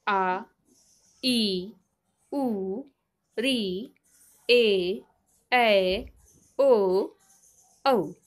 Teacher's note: दीर्घ स्वर जिसे उच्चारण करते समय ह्रस्व स्वरों की तुलना में एक मात्रा अधिक का समय लगता है।